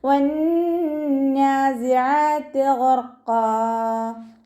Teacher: വാവ് ഉച്ചരിക്കുമ്പോൾ ചുണ്ടുകൾ ഒന്ന് സർക്കിൾ ചെയ്ത് കൊടുക്കുക. നൂനിന് ശ്രദ്ധ വന്നു. അഖ്മൽ ഉന്ന നല്ലോണം മണിച്ചു കൊടുക്കുക കേട്ടോ.